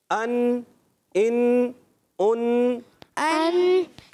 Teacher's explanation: حمزہ ادا ہوتا ہے حلق کے نیچے والے حصے سے